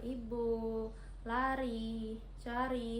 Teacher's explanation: vokal I tinggi atas depan dengan posisi mulut dengan posisi mulut tertutup